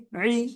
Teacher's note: আইনের নিচে জের, আইন জের ই, ই গলা চেপে